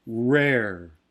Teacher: one thing that's inherent in most american speakers is a little bit of lip rounding on the r sounds so there is a diacritic for the lip rounding and that